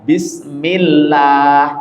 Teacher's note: Kalau sebelumnya ada harakat kasrah ditipisin lamnya bismillah tipis lamnya.